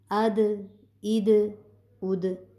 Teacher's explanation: حمزہ زبر دال اد، یہ دال حرف کلکلا ہے تو ہم اس پر آواز کے آخر میں حرکت دیں گے